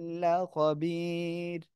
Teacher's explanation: এখন ওয়াকফ করলে র সাকিন হচ্ছে তার ডাইনে ইয়া সাকিন হলে র চিকুন করে পড়তে হয়।